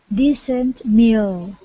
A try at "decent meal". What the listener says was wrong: Now here you don't have to say the T so much. Decent meal.